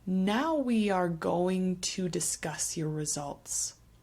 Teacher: Notice here we have a deletion of the G. We just hear the T.